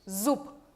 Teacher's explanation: B se convierte en P.